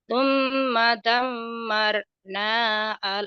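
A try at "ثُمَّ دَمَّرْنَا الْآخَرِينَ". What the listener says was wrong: naknya jadi pendek nal karena ketemu sukun, ketemu alif lam koma dia. Damar nalnya jadi pendek ya. Matobi betul tapi jadi pendek itu.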